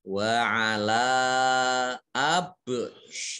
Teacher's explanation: ba sukun, ini huruf qalqalah. Qalqalah itu dibaca memantul.